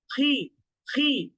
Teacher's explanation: মোটা হরফ হওয়া সত্ত্বেও জেরের উচ্চারণে খুব বেশি মুখ গোল করা যায় না